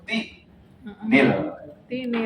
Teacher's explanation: Bunyi tin, bunyi nun sukunnya tadi, tanwinnya tadi dihidupkan kembali. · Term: nunul mufa'alatan